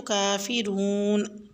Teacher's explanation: ایو کو سختی سے ملایا جائے گا، حل کرتے ہوئے لام کو باریک پڑھا جائے گا، موٹا نہیں کیا جائے گا۔ کافرون پہ کاف کھڑی زبر کا ہے تو اس کی حرکت کو ہم تھوڑا سا لمبا کھینچیں گے، اور کافرون کر کے چھوڑنا نہیں ہے، را واو پہ شروع کے ساتھ ہے تو حرکت بڑھ جاتی ہے، تو کافرون۔